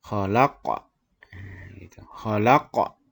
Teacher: Qafnya barisnya itu mati. Jadi bacaannya harus mantul. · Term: qalqalah sughra